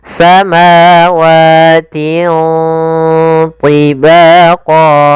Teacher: Bacaan ikhfa yaitu cara membacanya suara tanwinnya disamarkan ke huruf th atau membacanya di antara bacaan izhar dan ee idgham.